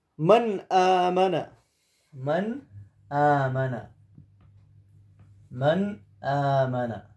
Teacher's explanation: نون ساکنہ ہے. اور نون ساکنہ کے بعد حروف اظہار میں سے حمزہ آیا ہے. تو اس نون کو ہم بغیر غنہ کے ادا کریں گے.